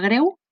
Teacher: la paraula greu, en què la E és tancada, i el truquet que ens ho recorda és que normalment les Es que formen part d'aquest tipus de diftongs, E, U, solen ser tancades.